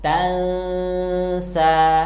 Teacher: suara annya disamarkan dan ditahan dengan dengung karena di sini ada hukum bacaan ikhfa Hakiki sehingga bacaan yang